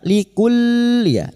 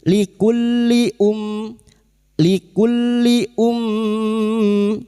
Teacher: Huruf kaf masuk ke dalam lam tanpa ditahan lama, jangan dibaca "likull", cukup masuk tanpa ditahan atau dinasalisasi.